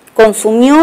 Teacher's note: consumió es un diptongo porque suena más la vocal abierta